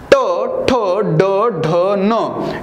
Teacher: या वेळेस जीभ ही वरी टाळूला टेकवावी लागते